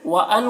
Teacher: व अन के नून में इख्फा हो रहा है, नून के आवाज़ को नाक में छुपा कर पढ़ेंगे